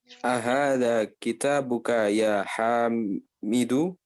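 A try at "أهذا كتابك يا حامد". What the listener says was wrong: Nah, ahsanta.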